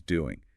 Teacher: in the very common informal speech that final G sound is frequently dropped